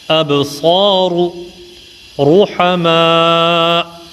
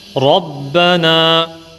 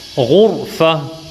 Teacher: On va lire, comme on dit plus communément, le Ra avec la bouche pleine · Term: tafkhim